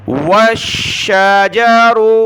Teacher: والنجم والشجر، واو کو شین کے ساتھ ملا ہے، شین کو سخت کیا تشدید کی وجہ سے